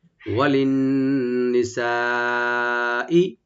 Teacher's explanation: নিসাই, ওয়ালিন নিসাই ওয়া ওপেন থাকবে, আর লিন নিসাই বলবো আমরা, নুন মোসাদ্দ এখানে এক আলিফ গুণনা করবো, আর সিন আমরা এখানে 4 আলিফ পর্যন্ত টানবো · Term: মাধ্যম মুত্তাসিল